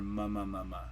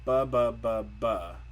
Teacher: She's using m instead of b, because when she tries to say buh, it just doesn't come out right. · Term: compensatory articulation error